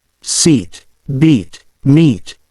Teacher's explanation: Now compare this with the long I sound found in words like seat, beat, and meet. The long I sound is produced by stretching the mouth more, and it is held a bit longer.